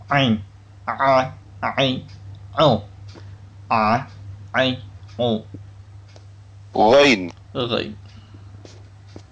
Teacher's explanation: Makhraj huruf Ain adalah tenggorokan bagian tengah.